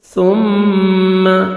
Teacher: سا کو نرمی سے ادا کرنا ہے، ثم سین نہیں پڑھنا، ثم میم مشدد.